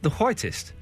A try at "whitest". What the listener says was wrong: You say a H before the W. It's quiet.